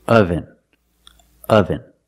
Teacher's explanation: The first syllable makes a sound like cup and up. This is a relaxed sound. Your mouth is almost closed.